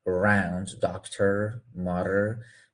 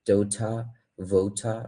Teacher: We say round, doctor, mother, but British people don't pronounce R, especially when it is at the end of the word.